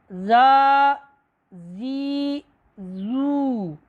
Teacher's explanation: ज़ाल ज़बर अलिफ ज़ा, ज़ाल ज़ेर या ज़ी, ज़ाल पेश वाव ज़ू, ज़ा, ज़ी, ज़ू। याद रहे हरफ़े ज़ाल जो है ये बारीक पढ़ा जाएगा